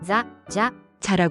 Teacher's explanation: 일본어의 자는 혀끝을 윗니, 뒤쪽 잇몸에 살짝 대고 마찰을 일으키면서 내는 소리입니다. 혀가 너무 강하게 닿아서 혀가 튀어나오거나 바람 소리가 너무 많이 나지 않도록 주의해야 합니다. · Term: 자행 발음